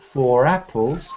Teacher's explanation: I say four apples and you can hear r r four apples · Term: English connectiv our